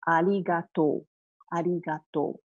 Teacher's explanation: we do not pronounce [the] R-sound because Japanese sound does not have the R-sound. So R-sounds are more like the L-sound, instead.